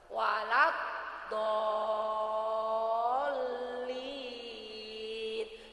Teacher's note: Jadi do-nya dipanjangkan dulu lalu masukkan ke huruf lan.